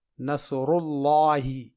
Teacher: یہ دیکھیے، یہ سورہ نصر ہے اور یہ لفظ اللہ ہے اور اس سے پہلے پیش ہے، تو یہاں پہ لفظ اللہ کے لام کو پر پڑھا جائے گا، جیسے نصر اللہ۔